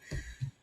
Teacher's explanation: Sounds like S. I'm kind of keeping the S the whole way through. There's air flowing the whole time.